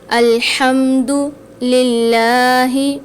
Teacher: للہ میں دیکھیں لام کے نیچے زیر ہے تو یہاں پر ہم للہ کو باریک پڑھیں گے · اب اس آیت میں دیکھیں، ہم نے ہا کی آواز نکالنی ہے الحمد میں، الحمد للہ، لام کے اوپر کھڑا زبر آ رہا ہے، للہ میں اس کو ہم نے کھینچ کے پڑھنا ہے